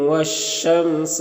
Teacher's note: الف لام حروف شمسی شین کے شروع میں ہے تو الف لام دونوں کو نہیں پڑھیں گے. میم میں اظہار شفوی ہوگا، اسے جلد پڑھنا ہے.